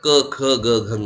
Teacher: ಎಲ್ಲ ಕ ವರ್ಗಗಳು ಕೂಡ ಕಂಠದಿಂದ ಹುಟ್ಟುತ್ತವೆ ಹಾಗಾಗಿ ಅವು ಕಂಠೆಗಳು ಅಂತ ಹೇಳಿ ಕರೀತಾರೆ ಇನ್ನು ಇವು ಜಿಹಾ ಮೂಲಿಯ ಧ್ವನಿಗಳು